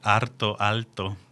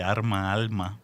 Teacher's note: siempre que ocurre esa sustitución de r por l ocurre entre dos consonantes o al final de una sílaba es decir que responde a un sistema no es así sistemático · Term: lateralización